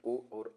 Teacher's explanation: कंठोष्ठ से ओ और औ बोला जाता है।